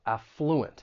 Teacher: when pronouncing this word the stress is going to be on that first syllable